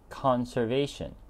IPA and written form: ˌkɑːn.sɚˈveɪ.ʃən (Conservation)